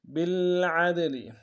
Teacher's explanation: کاتب بالعدل با کو لام کے سامنے لانا لام سے غنہ ہوگا. عین کو گہرے سے ادا کرتے ہوئے دال کے سامنے لانا ہے